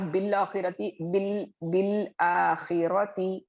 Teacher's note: तो हमजतुल वस्ल ड्रॉप हो रहा है, वहां पे आप बीस को डायरेक्टली लाम से मिलाकर पढ़ रहे हैं।